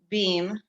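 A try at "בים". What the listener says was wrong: No dots. It's a V.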